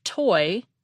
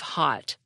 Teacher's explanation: we aspirate the T at the beginning of toy but swallow it at the end of hot